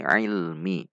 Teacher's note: Ada usaha yang keras dari kita supaya mengeluarkan huruf ai ini dari tengah tenggorokan sehingga membedakan dengan huruf hamzah, tidak dibaca i.